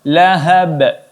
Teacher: qalqalah wusta atau qalqalah sedang. Cara membacanya cukup dipantulkan sedikit saja.